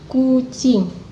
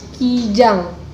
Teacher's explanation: merupakan bunyi dorsovelar yang dibentuk dengan artikulasi pangkal lidah dan langit-langit lunak Hai perbedaan itu disebabkan oleh adanya bunyi vokal yang langsung mengikutinya